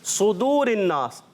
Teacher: زبان کی جڑ کے ساتھ ساتھ کیا ہوتا ہے, زبان کا درمیان کا حصہ بھی اوپر تالو کی طرف چلا جاتا ہے, تو یہ حرف اور زیادہ پر ہو جاتا ہے, یعنی اور وزنی. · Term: صفت اطباق